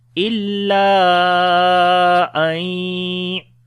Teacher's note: After the alif madda, hamza is coming in the beginning of the next word. So this mad we long 3 to 4 seconds. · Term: madde munfasil